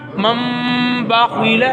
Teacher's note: نون ساکن تنوین کے بعد حرف با آئے تو نون کو میم سے بدل کر غنہ کے ساتھ پڑھتے ہیں. قرآن پاک میں اس مقام پر ایک چھوٹا سا میم بھی لکھا جاتا ہے. · میم میں سے بدل دیں گے اور چھوٹا میم بھی وہاں پر لکھ دیں. اب ہم نون کو نہیں پڑھیں گے بلکہ کس کو پڑھیں گے؟ میم کو پڑھیں گے